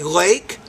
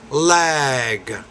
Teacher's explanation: when it ends in G the vowel is a little bit longer